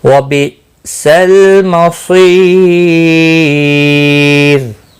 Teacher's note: وقف کی صورت میں رو ساکن پڑھا جائے گا, باریک بھی پڑھا جائے گا, یا ساکن کی وجہ سے باریک پڑھا جائے گا · یا مدہ ہے ایک الف کے برابر کھینچ کر پڑھیں گے